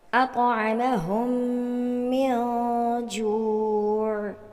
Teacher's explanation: تیسری مثال میں دیکھیے کہ یہاں پر میم ساکن کے بعد میم آ رہا ہے جس کو ہم مشدد انداز میں پڑھتے ہیں، اور ایک اور بھی قاعدہ یہاں پر اپلائی ہو رہا ہے، جو کہ نون ساکن کے بعد حروف اخفاء میں سے جیم آ رہا ہے تو یہاں اخفاء ہو رہا ہے